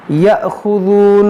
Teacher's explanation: یہاں پر دیکھیں حمزہ ساکنہ ہے تو اس کو جھٹکا دے کر پڑھیں گے